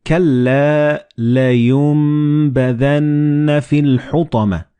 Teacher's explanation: So the noon and ba, they will be assimilated together and you will pronounce them as meme.